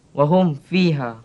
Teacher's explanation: cara bacaannya mim hendaklah dinyatakan dan tanpa dengung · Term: izhar syafawi